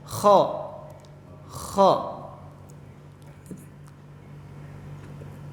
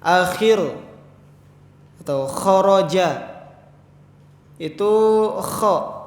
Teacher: Kemudian di sini juga ada huruf kha. Huruf kha ini itu keluar dari tenggorokan bagian atas.